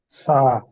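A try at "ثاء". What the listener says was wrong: সা। সা বলা যাবে না। সা হচ্ছে জিহ্বার আগা সামনের উপরের দুই দাঁতের আগার সাথে লাগবে। হ্যাঁ, সা জিহ্বার আগা সামনের উপরের দুই দাঁতের আগার সাথে লাগবে।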